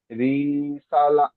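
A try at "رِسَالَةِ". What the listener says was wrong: রিতে টান দিচ্ছেন কেন? আপনি পড়লেন হারাকাতের পড়া টান হয় না।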